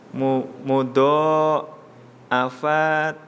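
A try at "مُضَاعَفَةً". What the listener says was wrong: pendek. Fa-nya pendek.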